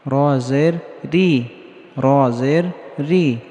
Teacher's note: র এর নিচে যখন জের হবে তখন র কে পাতলা করে পড়তে হবে